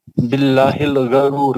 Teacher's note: लामी जलाला से पहले जेर है, इसको सर बारीक पढ़ेंगे, बिल्लाहिल गरूर, गरूर में सर मद आरी से रोकेंगे।